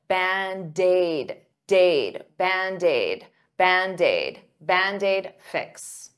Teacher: Band-Aid is 2 words, but to pronounce them like one, I'll take that D and transfer it to the vowel.